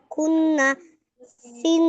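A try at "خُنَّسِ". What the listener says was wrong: খুন্নাসি, তা গুন্না ওয়াজিব গুন্না কি গুন্না হলো? আপনি যেভাবে পড়লেন সেভাবে কি গুন্না করা হলো?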